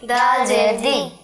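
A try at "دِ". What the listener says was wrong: झटका भी नहीं देना बेटा, जी नहीं बोलना, जी जी, दोनों रॉन्ग हैं, ठीक है, गलत हैं, जी जी जी, नॉर्मल आवाज, जी जी, दी, जी दी, जीम ज़ेर जी, दाल ज़ेर दी, जी दी,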